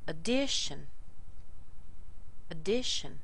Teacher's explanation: there's no strength in this first syllable here. It's all in the second syllable.